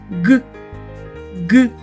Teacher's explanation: коли ми промовляємо цей звук губи відкриті влегко посмішку зуби зближені кінчик язика опущений вниз а спинка піднята гіркою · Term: звук Ґ